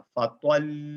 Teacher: جو شد ساؤنڈ ہے وہ شد ڈراپ نہیں ہوگا، ٹھیک ہے، آپ شد کو جاری رکھتے ہوئے دو حرف کی ادائیگی کے برابر اس پہ وقت لگاتے ہوئے اس کو جاری رکھیں گے ۔ جس طرح ہمارے پاس ایک ایگزامپل ہے، فَطَلٌ، ڈبل پیش